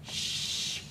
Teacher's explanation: You're not doing anything. There's nothing, your vocal cords are not doing anything. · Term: letters of al-hams